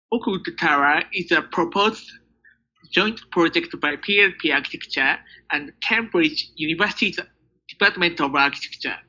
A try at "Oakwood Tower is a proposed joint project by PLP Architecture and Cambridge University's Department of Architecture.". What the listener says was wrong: Alright, that's better than yesterday.